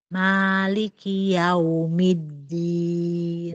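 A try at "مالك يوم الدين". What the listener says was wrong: Sudah lumayan Ibu ya. Yang penting jangan yaumi.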